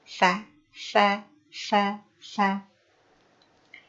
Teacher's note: ujung lisan kita sedikit keluar, namun tidak boleh berlebihan.